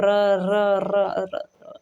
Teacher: जिन व्यंजन वर्णों का उच्चारण करते समय जीवा में 2-3 बार कंपन होता है, उसे प्रकंपित व्यंजन कहते हैं